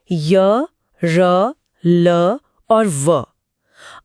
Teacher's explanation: अंतस्थ का मतलब है बीच में स्थित। इनके उच्चारण में जीभ मुंह के किसी हिस्से को पूरी तरह स्पर्श नहीं करती। बस उसके करीब जाती है। हवा पूरी तरह रुकती नहीं बस एक संकरे रास्ते से निकल जाती है।